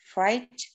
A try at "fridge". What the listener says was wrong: Itu I-nya pendek, Bu, di kata kulkas itu.